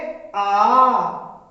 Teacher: तो उच्चारण हमने किया आ, तो अधिक समय लगा, इसीलिए इसको दीर्घ की श्रेणी में लाए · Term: दीर्घ वर्ण